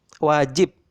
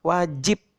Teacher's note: bunyi yang kalian ucapkan pada bunyi yang terakhir pada kata wajib itu bukan bunyi B, melainkan bunyi P tertutup.